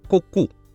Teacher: При слоге «ку» естественным образом поднимается мягкое небо, закрывая проход из носа в глотку.